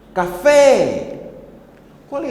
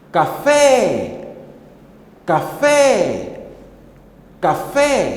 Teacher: é claramente é a sílaba fé que saiu com mais intensidade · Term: sílaba tônica